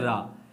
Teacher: जीभ मुख के मध्य में आ जाती है और बार बार झटके से आगे पीछे गिरती है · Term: लुंठित